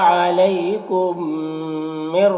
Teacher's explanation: میم ساکن کے بعد میم ہے تو میم کو میم سے ملا کر غنہ کے ساتھ پڑھیں گے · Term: ادغام شفوی